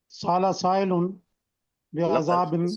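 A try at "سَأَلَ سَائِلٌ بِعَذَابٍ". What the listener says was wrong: سائلن، ذرا لمبا کر کے اچھا سا پڑھے نا.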